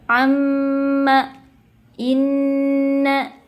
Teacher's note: Makhrajnya berada di khaysyumiyah, yaitu rongga hidung, masuk ke rongga hidung. Caranya adalah dengan memasukkan suaranya, bunyinya ke rongga hidung, kemudian coba kita pencet kedua hidung kita. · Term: gunnah